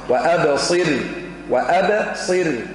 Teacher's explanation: رقق الراء قبلها كسرة